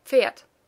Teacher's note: The same happens with Pferd, which is spelled with a D, but pronounced as if it had a T at the end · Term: Auslautverhärtung